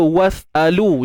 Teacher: jelas Hamzah tu satu harakat sahaja, maka sudah pasti tiada mat padanya, tiada pemanjangan padanya